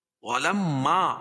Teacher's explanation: میم مشدد ہے، اس میں غنہ ہوگا